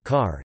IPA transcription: ɑː